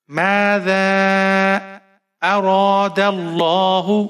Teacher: ذال کو آپ 5-6 حرکات تک کھینچ کر پڑھیں گے، مد منفصل ہے ذال کے اوپر. ماذا اراد اللہ، حمزہ کے اوپر زبر ہے، بغیر کھینچے پڑھنا ہے.